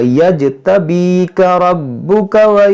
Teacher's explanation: यज, जी में कलकला होगा.